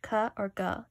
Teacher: firstly we have veal our consonants so veal are just means you're using the back of your tongue like the sound K or G